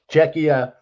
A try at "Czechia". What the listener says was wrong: correctly, because when we played our first game, I was doing it like you, Czechia, but it's Czechia. You know, yeah, pronounce the K.